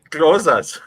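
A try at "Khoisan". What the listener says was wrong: You have to put in the click.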